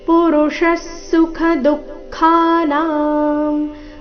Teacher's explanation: ವಿಸರ್ಗದ ಅರ್ಧಸ ಮುಂದಿನ ಸುಖ ಒಟ್ಟಿಗೆ